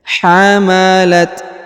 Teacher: hamalat umuhu perhatikan huruf ta berharakat sukun ya diberikan hembusan tipis huruf Ma ditahan dan ditekan karena terdapat tanda tasdid